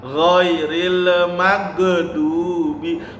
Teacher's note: Ghairil magnya juga jangan dipantulkan karena ini bukan bacaan qalqalah ya. Ditahan.